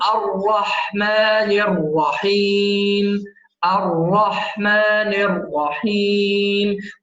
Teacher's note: المحافظة على تفخيم الراء في كلمة الرحمن وكلمة الرحيم